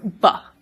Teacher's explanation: So with something like B, which we call a bilabial sound, we have closed both our lips, hence bilabial, and then we've released the air